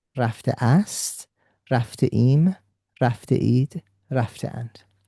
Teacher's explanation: So rafte by itself is the participle passive of the verb, or participle past of the verb, and that what you see after is a glottal stop just to separate the participle from the personal ending